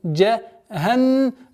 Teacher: удвоение буквы нун с назализацией в размере 2 огласовок